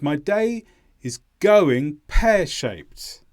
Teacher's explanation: go is the main stress in going and pair is the main stress in the second part